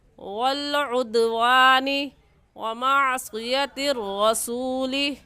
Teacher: دال حروف قلقلہ میں سے ہے، قلقلہ کریں گے